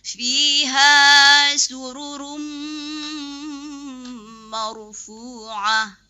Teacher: pengucapan ra tafkhim, ya itu harus ditebalkan ya. Fiha sururum marfu'ah, tadi kurang tebalnya.